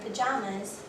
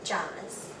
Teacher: So for a child with weak syllable deletion, they would omit the po and pronounce the word tato. Likewise for the word pajamas, there is a weak, strong, strong syllable pattern. So they would omit the syllable pa and pronounce the word jamas.